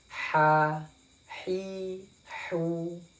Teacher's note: Ha kecil ini ada di tengah-tengah tenggorokan, ya. Kita contohkan: ha, hi, hu.